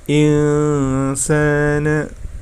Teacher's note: nun sukunnya dibaca samar, kemudian mendengung. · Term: ikhfa